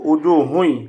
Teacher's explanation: হবে এখানে তানবিনের পরে এখানে তানবিনের পরে যেহেতু ইয়া আসছে সুতরাং উজুহুন না বলে আমরা বলব উজুহু ইদগামে বিলগুন্না গুন্নার সহিত ইদগাম করব